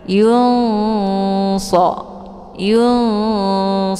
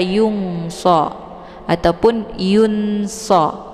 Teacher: nunnya disamarkan kemudian siap-siap menuju ke huruf shad sambil didengungkan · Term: yakhfa